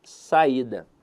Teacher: veja que a sílaba tônica dela está na penúltima sílaba então a verdade é que a palavra saída é uma paroxítona